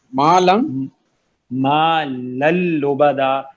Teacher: مالن میں جو نون کی ساؤنڈ تھی نا وہ غائب, وہ آئے گی نہیں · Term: بغیر غنہ